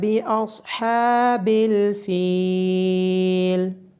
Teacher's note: باصحاب الفیل، صاد کو موٹا پڑا جائے گا، ہا کی آواز گلے کے درمیان سے آئے گی، ہا کے اوپر کھڑی زبر ہونے کی وجہ سے ہا کو لمبا کیا جائے گا اور فا کے بعد یا مدہ ہونے کی وجہ سے فا کو لمبا کیا جائے گا۔